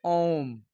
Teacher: इसमें तिगुना समय लगता है। ह्रस्व स्वर से तिगुना समय लगता है ओम बोलने में। इसीलिए हम लोग उसको प्रत स्वर कहते हैं।